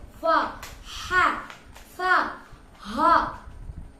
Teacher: കട്ടി കൊടുക്കൽ ദുർബലം എന്ന് പറയുമ്പോൾ കട്ടി അധികമില്ല ഉച്ചാരണത്തിൽ ശ്വാസം പുറത്തുപോലും അപ്പോ ഫ ഭയങ്കര കട്ടിയൊന്നുമില്ല പക്ഷേ ശ്വാസം പുറത്തോട്ട് പോകും